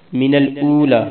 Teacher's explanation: من الاولی، حمزہ واو پیش، او تھوڑا سا لمبا کرنا ہے، لام کو بھی تھوڑا سا لمبا کرنا ہے